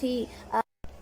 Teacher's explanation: خا، حلق کے اوپر والے حصے سے خا ادا ہوتا ہے۔ خا پر زیر ہے، نہیں کھینچیں گے۔